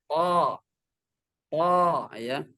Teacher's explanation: Pertemuan punggung ujung lidah bertemu dengan pangkal gigi seri yang dua ini, tapi bagian dalam.